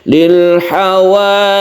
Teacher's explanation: kita tasdidkan dahulu baru kita panjangkan y-nya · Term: Mad tamkin